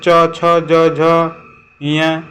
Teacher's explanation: जैसे च छ ज जब पढ़ेंगे तो ये जीभ आपका जो है तालुओं में लगेगा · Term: तालु व्यंजन